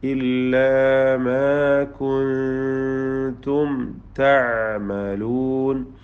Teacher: കുൻതും സാക്കിന നൂനിനെ ഇഖ്ഫാ ഹഖീഖി നൽകി മറച്ചു മണിച്ചു കൊണ്ടുവന്നണം. പദത്തിൻ്റെ അന്ത്യത്തിലെ സാക്കിന മീം ഇൽഹാർ ഷഫവി നൽകി മണിക്കാതെ വെളിവാക്കണം